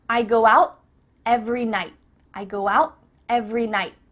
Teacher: your tongue is at the top of your mouth you're about to make the T sound but no air goes through so it's just stopped at the top of your mouth I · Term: cut off the T